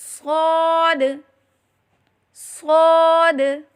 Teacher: زبان کی نوک اور دونوں دانتوں کے اندرونی کنارے سے ادا کریں